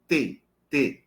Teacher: a o t ele não encosta nos dentes superiores mas ele encosta nos alvéolos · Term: oclusiva alveol